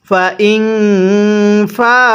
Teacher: নুন সাকিনের পরে যদি ইকফার 15টি হরফ থেকে কোনো একটি হরফ থাকে তাহলে নুন সাকিনটিকে গুন্নাহ করে পড়তে হয়